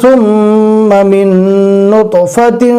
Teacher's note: جزم والے نون کو نہیں پڑھنا ہے، میم کو ڈائریکٹ دوسرے نون سے جو تشدید والا ہے اس سے ملانا ہے. لیکن یہاں پر الف نہیں پڑھیں گے.